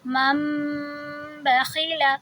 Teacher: تو اب ہم اس کو پڑھیں گے میم میم زبر مم، اور ہم آواز کو دو حرکہ لمبی کریں گے آپس میں اپنے ہونٹوں کو ملاتے ہوئے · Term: اقلاب